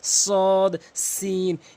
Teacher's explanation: সদ সিন, পার্থক্য হচ্ছে সদটি মুখ গোল হবে, সিনটি মুখ ওষার হবে